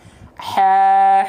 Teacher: Makhrajnya, tempat keluar hurufnya adalah dari wastul halqi. Wastul halqi itu artinya adalah tengah tenggorokan. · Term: H kecil